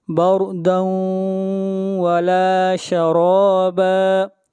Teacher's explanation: تنوین کے بعد حروف یرملون میں سے واو ہے، ادغام مع الغنہ ہوگا